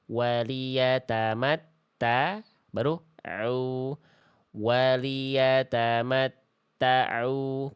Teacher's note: bunyi ainnya jangan sampai masuk ke ta, jadinya kayak tasydid ainnya. Waliyatamatta'u, jangan ta'u.